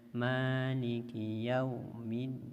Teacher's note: Kadang-kadang kita baca hanya sekedar saja yaumiddin, harusnya yaumiddin. Kalau bacanya maliki yaumiddin, bisa saja huruf waw ini berhenti atau kadar huruf waw itu monyongnya kurang